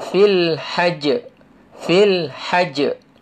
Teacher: Mati dia. Sebab jim tu bila tanda mati, ada hukum qalqalah.